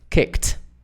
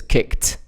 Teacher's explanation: The last sound in kick is is also non-voiced, so it's kicked.